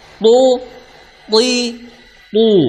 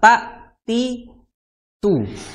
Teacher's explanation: huruf tho Dia memiliki sifat istila ya tebal jadinya gampangnya gitulah pangkal lidahnya naik akhirnya memunculkan suara tebal berbeda dengan ta ta itu biasa ta ti tu ya tapi kalau tho th